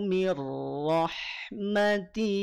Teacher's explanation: Ti panjang 2 harokat